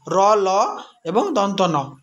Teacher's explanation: জিভের ডগা দন্তমূল স্পর্শ করে শ্বাসবায়ুকে বাধা দিলে যে ধ্বনি উচ্চারিত হয় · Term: দন্তমূলীয় ব্যঞ্জন ধ্বনি